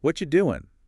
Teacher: The T at the end of what meets the Y of you? That's assimilation giving you the chi sound. What you then are reduces probably to just the schwa sound.